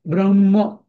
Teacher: ब्रह्म म्हणताना म आधी नाही येत, ह आधी येतं. ब्रह्म असं येतं.